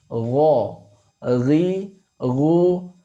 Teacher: Kemudian sifat dari huruf ghain ini juga memiliki sifat al-isti'la sehingga dibaca tebal